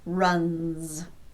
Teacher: Again, N is a voiced consonant, n, so the S will be pronounced z